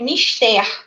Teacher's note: que a ênfase é no ter. Ela é uma oxítona.